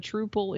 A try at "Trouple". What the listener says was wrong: You're saying Truple. It's trout and apple, so it's Trouple.